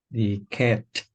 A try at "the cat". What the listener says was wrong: Yeah, so we say the cat.